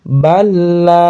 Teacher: Jadi tidak ditahan balah salah. tidak ditahan langsung dimasukkan kepada huruf berikutnya · Idgham dimasukkan ke huruf berikutnya bila gunah, bila tanpa gunah, tanpa ditahan, tanpa dengung, langsung masuk ke la. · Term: idgham bila gunah